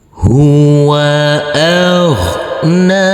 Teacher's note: Huruf ghain yang bersukun ini tidak boleh dipantulkan karena ini bukan bacaan qalqalah.